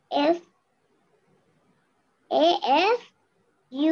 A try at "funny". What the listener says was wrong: Not A F. F U N N Y. F U N N Y.